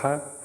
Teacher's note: हा महाप्राण जो होता है ये जो है कंठ में आता है